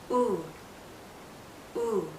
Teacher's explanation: The circle that we make with our lips is tight. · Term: tense